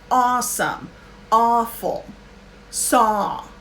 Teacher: aw it's just ah ah it's never oh no get the w sound out of there the w is silent don't ask me why english is crazy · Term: open ah